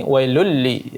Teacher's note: Maka di tanwin bertemu lam, idgham bila gunnah, ya, tanpa gunnah, tidak ada dengung. Yang ada kita baca langsung saja disamarkan ataupun dimasukkan tanwinnya ini ke dalam huruf lamnya.